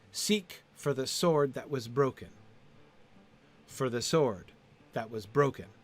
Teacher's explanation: Two unstressed syllables in a row twice.